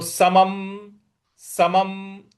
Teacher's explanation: समम के ऊपर जो अनुस्वार है उसके आगे प लिखा हुआ है, तो यहां पे सम जो अनुस्वार है उसका भी उच्चारण हम म ही लाएंगे